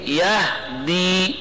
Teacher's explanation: یہدی میں ہا حرف ساکن رخوا تھا